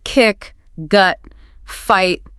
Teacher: where you stop the air completely and then it explodes out. They're punchy. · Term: plosives